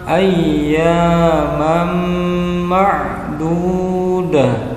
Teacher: Mam ada tanwin bertemu dengan mim maka harus dikasih harokat tasdid tanda dari idgham, idgham bigunnah mendengung panjangnya dua harokat